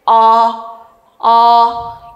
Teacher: 저모음 경우에는요 혀를가 혀가 아니라 입을 가장 많이 벌리게 됩니다